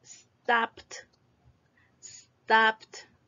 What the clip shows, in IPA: stɒpt